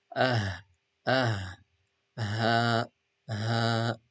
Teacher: ha qui sort vraiment du fond de la gorge